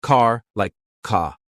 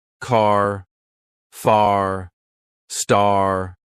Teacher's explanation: British people say car like ca but Americans they love their r sounds